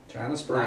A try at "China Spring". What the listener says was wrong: Not Springs, Spring, I was told. Only one spring.